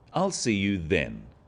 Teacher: This is now a definite commitment and an end to the arrangement. Notice how the stress is on the word then to confirm that the time is definite.